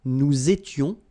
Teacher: little liaison and final S not pronounced